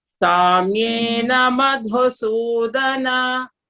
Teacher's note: Madhu is D Mahaprana, no? You have to stress.